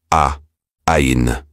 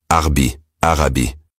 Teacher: Ain ! est un son qui vient du fond de la gorge. Imaginez que vous serrez légèrement la gorge en prononçant un a.